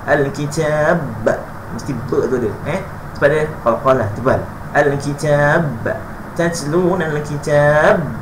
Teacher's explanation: Qalqalah kubra ni dia berada pada hujung perkataan. Jadi al-kitab mesti jelaskan.